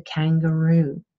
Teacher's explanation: Moving further into the back of the mouth, we have the velum, the soft part of the palate. And the velum and the back of the tongue can come together and close off the oral cavity. And then we have a velar plosive. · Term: voiceless velar plosive